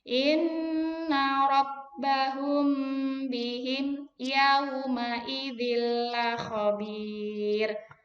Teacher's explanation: Gunah. Ditahan dengan dengung. Berapa harokat? 2.